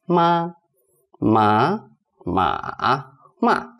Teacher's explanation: First tone is really flat, so that will be 妈, 妈, 妈, 妈.